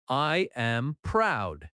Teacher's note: Feel the drop at the end. That falling tone shows confidence.